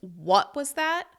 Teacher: If the person said something to you that sounded like it could have been a little bit rude, and you want them to repeat themselves, and you’re going to show a little annoyance or a little bit of kind of defensiveness, you’re going to stress the “what” at the beginning of the sentence. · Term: extra stress